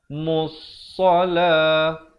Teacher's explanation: Jangan baca mulsala kerana lam itu tidak dibunyikan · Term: alif lam syamsiah